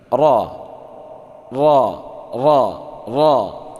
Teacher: Ra itu ujung lidah mengarah sedikit ke punggung lidah, ya, bertemu gusi depan yang di atas dekat dengan makhraj nun. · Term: bunyi huruf ra